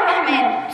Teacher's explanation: سامعين صوت اللام لا ليه لانها لام شمسيه